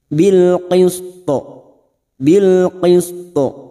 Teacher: Karena kita waqaf pada tanda shad lam maka huruf po ini namanya hukum bacaan qalqalah kubra. Namanya qalqalah kubra yang mati di akhir dan dibaca waqaf.